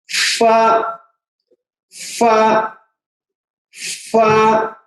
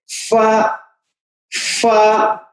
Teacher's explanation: सामने के दांतों का किनारा होठों, नीचे के होठों के तरी पर लग करके फूंक के साथ अदा होता है